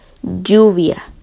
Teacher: el pre dorso de la lengua se va a unir al paladar duro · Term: lingua para tales